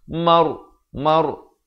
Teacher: Maur. Lidah tu kita rasa dia menyentuh sekejap lelangit itu. Kalau sebut mar, lidah tak kena lelangit.